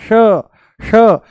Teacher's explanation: जैसे ही हम बोलते हैं श, जैसे ही बोलते हैं हम श, मूर्धा ऊपर से बोला जाता है, श श, जीभ को थोड़ा सा ऊपर घुमा करके तालू से लगा करके बोला जाता है श। इसका उच्चारण है श, मूर्धा ऊपर है ना श, और इसका है स, स, ये है स, दांतों से बोला जाएगा, ये है तालू से श।